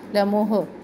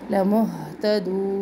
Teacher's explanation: लमुहतदून, हा साकिन का ध्यान रखें, हिले नहीं, लमुह ऐसे नहीं पढ़ना और हा को सख्ती के साथ सीने से अक्सा हलक से इसको निकालना है